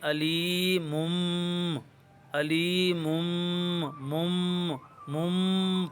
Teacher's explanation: آپ نون ساکن کی آواز یا تنوین کی آواز پیدا کرنے کے بجائے چھوٹی میم کی آواز پیدا کریں گے، یعنی علیمم، علیمم، مم مم پڑھیں گے، غنہ بھی کریں گے۔ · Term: اقلاب